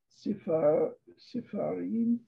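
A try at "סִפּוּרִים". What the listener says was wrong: Well, it's a P, it's Pei, yeah. Oh. Sipurim.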